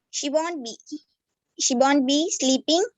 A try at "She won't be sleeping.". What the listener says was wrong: நிப்பாடக்கூடாது actually. She won't be sleeping. She won't be sleeping. இல்ல கேள்வி இல்ல, அது கேள்வி மாதிரி வருது. அப்படி கேட்க கூடாது. She won't be sleeping. She won't be sleeping. இல்லங்கிறது சொல்லணும்.